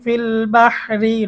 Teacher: আর যদি অক্ফ না করে মিলিয়ে পড়ি ফিল বাহরি রটা চিকন হবে